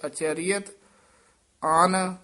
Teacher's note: dash ਦੇ ਕੇ ਉਚਾਰਨ ਕਰਨਾ ਅਚਰੀਅਤ ਪਾਠ ਇਕੱਠਾ ਹੀ ਹੈ ਅਚਰੀਅਤ ਅਨ ਪਦ ਭੋਲਾ ਹੀ ਬੋਲਣਾ ਅੰਨ ਨਹੀਂ ਕਹਿ ਦੇਣਾ